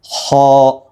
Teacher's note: വായ അടഞ്ഞതായ രൂപത്തിൽ നാവിൻ്റെ മധ്യഭാഗം ഉയർന്നതായ ഗതിയിൽ ഒരു ഘനപ്പിച്ച ശബ്ദത്തോടുകൂടിയായിരിക്കണം ഉച്ചരിക്കേണ്ടത്. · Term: തഫ്ഹീം